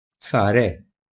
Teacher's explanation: Yani ç sesini s sesi olarak okuyacağız.